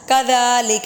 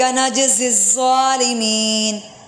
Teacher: کذا میں ذال نرمی والا اور نجزی الظالمین سختی سے